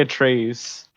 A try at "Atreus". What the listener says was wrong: Did you say Atreus? It's Atreus, not Atreus. His name doesn't rhyme with goose.